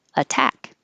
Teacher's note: is possible with water water but it's not possible with attack we have to keep that t a t because it's in the stressed syllable